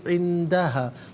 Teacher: नून साकिन को इख़फ़ा के साथ पढ़ा जाएगा। इख़फ़ा कहते हैं नाक में आवाज़ ले जाकर गुनगुनाना।